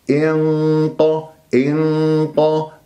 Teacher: غنة مفخمة لأنها نون سكنت جاء بعدها قاف مفتوحة مفخمة مرتبة ثانية فالغنة تكون مفخمة مرتبة ثانية انق انق وليس انق